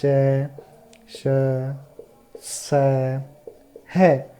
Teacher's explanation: दो उच्चारण स्थान या दो उच्चारण अवयव पास पास आ जाते हैं, निकट आ जाते हैं और बीच का जो मार्ग छोटा हो जाता है, इसलिए वायु को संघर्ष करना पड़ता है। · संघर्षी वर्ण, यानी संघर्षी व्यंजन है ये। संघर्षी व्यंजन यानी इनके उच्चारण में वायु को संघर्ष करना पड़ता है · इनमें गर्म हवा बाहर निकलती है संघर्ष के कारण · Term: ऊष्म वर्ण